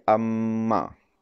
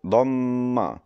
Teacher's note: penggabungan dua bibir atas dan bawah, maka barulah akan terzahirnya huruf mim tersebut